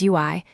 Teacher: EU plus I gives UI, a quick glide from EU to I